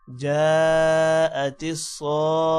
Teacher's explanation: اب جب وقف آیا تو تا ہا میں تبدیل ہو گیا ہے